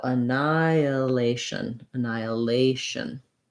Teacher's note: a kind of gliding sound i don't have to put it in strongly not annihilation but it should happen naturally as i move between the vowels that's called vowel to vowel linking it happens a couple of